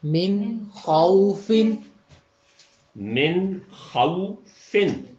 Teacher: واو لین کی پوری آواز ہے